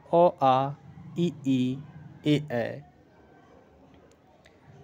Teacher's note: जिन स्वरों के उच्चारण में ओठ वृत्तमुखी या गोलाकार नहीं होते हैं उसे आवृतमुखी स्वर कहते हैं